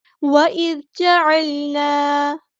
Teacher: یہاں پہ ذال کو ہم باریک پڑھیں گے، نرمی سے ادا کریں گے